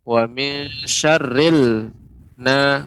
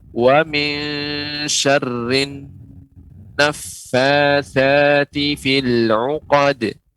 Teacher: tidak ada lamnya karena huruf syamsiah nun, maka alif lamnya dilebur ke nun